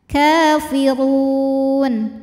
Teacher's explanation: huruf ro dibunyikan secara tafkim karena berbaris dah maka ditebalkan kafirunun hukumnyaalah madidun karena Mad Thobi'i